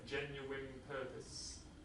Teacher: the N in genuine is assimilated to an M, genuine purpose.